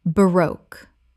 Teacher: Two syllables with the stress on the second. It rhymes with spoke.